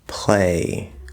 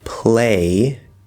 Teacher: use the dark l or what i like to call the half l vowel sound in the place of where we would use the light l or full l consonant sound instead of saying play we can say play with that dark